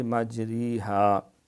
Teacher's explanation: جس را میں امالہ کیا جائے وہ را باریک ہوگی